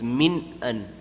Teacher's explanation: Idhar noon sakin, you don't make any ghunna,